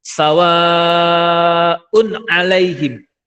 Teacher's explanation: ada tanwin domatain ketemu dengan ain. Ini dibaca jelas.